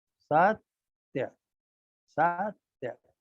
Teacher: तो जैसे सत्य है तो स लघु है, त्य लघु है, लेकिन त्य ता और या के मिलके त्या जो बना, त्य के आग्रह से उसका पूर्ववर्ती लघु भी गुरु हो जाएगा और वो सत्य हो जाएगा।